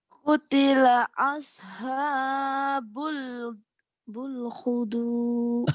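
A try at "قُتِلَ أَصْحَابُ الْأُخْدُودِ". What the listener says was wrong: Ternyata salah. Ukhdud Ukhdud bukan hudud. Ukhdud. Ayo lagi.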